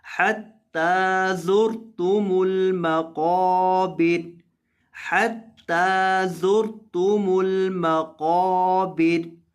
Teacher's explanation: وقف کریں گے، را کو پر کر کے، را کو موٹا کر کے پڑھیں گے